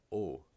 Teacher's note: The O with the acute accent is the same sound as the O without the accent, but it's longer. So if you understand the idea of O, just stretch it out.